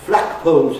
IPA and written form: ˋflækpəʊlz (flagpoles)